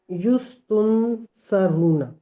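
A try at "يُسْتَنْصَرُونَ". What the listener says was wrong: तुन पे चले गए हो आप।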